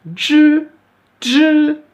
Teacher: on va faire un DJ, comme en français DJ, avec un I qui est à la limite du E du fond de la gorge. Pour faire ça bien, on va mettre la langue en arrière.